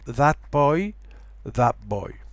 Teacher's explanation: But notice that t becomes a p. It doesn't become a b, as in bad boy. So there's no change in voicings. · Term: Changes in place of articulation